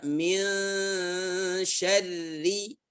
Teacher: Ya, nun bertemu sya, nun sukun bertemu sya, ya, persiapan ke makhraj huruf sya. Makhraj huruf sya tengah lidah dengan langit-langit. Ya, min syarri, tipis semuanya.